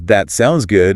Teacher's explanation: stressing good in that sounds good to show strong approval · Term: sentence stress